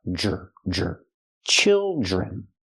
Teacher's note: Use the short I sound like this is, children. And the DR makes the J sound like jump and juice, plus the R, jr, jr. Children.